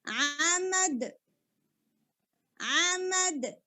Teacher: stop کرتے ہوئے دال ساکن ہو جائے گا اور دال کے اوپر قلقلہ ہوگا